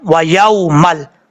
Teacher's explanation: واو کو پڑھتے وقت ہونٹ گول کریں گے، یا کے بعد واو مدہ نہیں ہے، اس کو لمبا کرنے کی ضرورت نہیں ہے، یہ واو لین ہے، واو ساکن سے پہلے زبر تو واو لین ہوتا ہے، پیش ہو تو واو مدہ ہوتا ہے۔